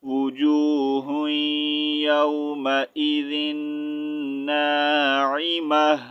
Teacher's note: عین زیر عی میم زبر ما ناعیم تا ٹو پیشتن، سٹاپ کی صورت میں ہا کا ساؤنڈ نکالنا ہے